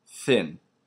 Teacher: but it's the th as in thin it's unvoiced now voicing is basically done in the glotus that's in your